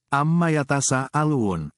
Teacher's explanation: tanwin mim tasdid hukum guna musyadadah karena ada mim yang bertasdid Mim bertasdid dibaca dengan dengungan gunah selama dua harakat